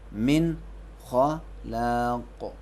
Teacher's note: حروف حلقی 6 ہے, حمزہ ہاؤ ہاؤ خاؤ عین و غین. اس کے وقت نون کو چھپائیں گے نہیں بلکہ نون کو اپنے اصلی حالت میں ظاہر کر کے پڑھیں گے, جسے اظہار کہتے ہیں.